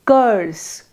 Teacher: The central position is harder to both see and feel. But an example of this is the vowel, as in the Southern British English pronunciation of the word curse.